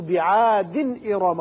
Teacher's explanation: تنوین کی وجہ سے آگے حمزہ ہے، اظہار حلقی ہوگا